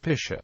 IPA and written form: paɪˈsiːə (Picea)